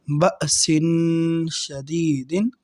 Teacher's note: با حمزہ زبر با، سین دو زیر سن، بأسن۔ شین حروف اخفا میں سے ہے، لہٰذا ہم یہاں تنوین پر یعنی دو زیر پر غنہ کریں گے۔ بأسن، شین زبر شا، دال یا زیر دی، شدی، دال دو زیر دن، شدیدن، بأسن شدیدن۔